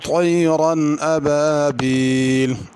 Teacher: طیرن طا ہے، اس کو طا پڑھنا، تیرن تا کر کے نہیں پڑھنا